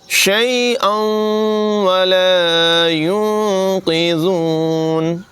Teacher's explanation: گے، شفاعتہم شیئا ولا ينقذون، شیئا یہاں پر بھی ادغام ہوگا، تنوین کے بعد واو حروف یرملون میں سے ہے، ادغام ہوگا، غنہ کریں گے